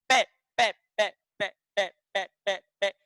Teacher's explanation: दोनों होठ आपके मिलेंगे